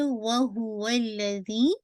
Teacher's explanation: वल्लज़ी लाम को twice set कीजिएगा. लाम पे शद है. जी को आपने काउंट करना है 4 to 5 काउंट.